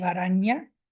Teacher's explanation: The palatal nasal ña continues unmodified into modern Spanish